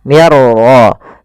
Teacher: Cara membacanya, masukkan nun ya kepada huruf ra sehingga suara nunnya hilang, langsung terbaca dengan jelas suara ra-nya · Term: idgham bila gunnah